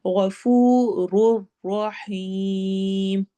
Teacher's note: में वाव मद्दा हो रही है लंबा करेंगे, और ऐसे ही रुर रहीम में या मद्दा और मद आरिद वक्फी है तो वो ज्यादा लंबा होगा।